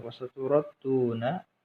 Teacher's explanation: huruf ra dibaca tafkhim, tebal dikarenakan harakat fathah